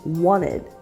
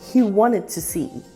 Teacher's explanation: Did you notice that the T in the word wanted is almost silent? This is because it's pronounced with a stop T as wanted.